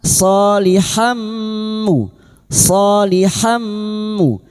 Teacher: masuk dengan mendengung masuk pada huruf mim dan mendengung selama 3 harokat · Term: idgham biguna